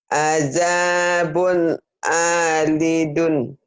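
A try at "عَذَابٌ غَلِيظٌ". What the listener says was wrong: Alidun, pan itu ada titiknya bu. Ini kan ada titiknya bu. Kalau ada titik kok ain sih bu. Azabun golidun.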